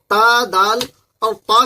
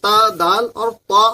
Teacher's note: जुबान का सिरा ऊपर के सामने वाले दांतों की जड़ से मिल जाए तो ता दाल और त अदा होते हैं